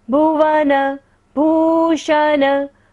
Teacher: भ पर बड़े उ की मात्रा है, इसलिए हमने पहले वाले भ को हल्का सा टच किया और बड़े वाले जो नेक्स्ट भूषण वर्ड है उसको हमने लंबा खींचा है।